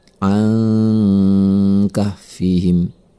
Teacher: ada huruf nun mati bertemu dengan huruf Kaf maka ini adalah ikhfa cara membacanya adalah dengan mendengungkan nya selama dua harokat